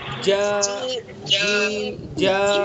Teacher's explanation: زبان کا بیچ اور اس کے مقابل اوپر کا تعلق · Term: جیم کا مخرج